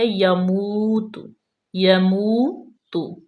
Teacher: یا پہ زبر ہے، واو مدہ ہے، اس کو لمبا کریں گے، یہاں پہ ہم یموت نہیں کریں گے، جھٹکا نہیں دیں گے، بالکل سموتھ پڑھیں گے یموت۔